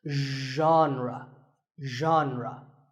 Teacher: Pay attention to the first sound. It's like sh, but you have to put your voice into it.